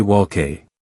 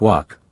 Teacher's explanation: even though it includes an L in the spelling, that L is completely silent.